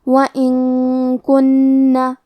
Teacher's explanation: کلمت وَإِن کے آخر میں نون ساکن ہے، پھر حرف الکاف ہے کلمت کنہ، کاف حروف الاخفاء میں سے ہے تو ہم یہ حکم کو غنہ کے ساتھ ادا کریں گے